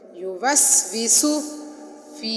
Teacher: فی حروف مدہ میں سے ہے، ایک الف کی مقدار کھینچ کر پڑھیں گے اور صودو صاد کو موٹا کر کے پڑھیں گے.